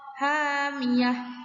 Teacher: ketika waqaf dia dibaca ha, dan ketika wasol dia tetap dibaca ta marbutoh